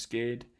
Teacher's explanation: in some cases like in parking or scared um the r just disappears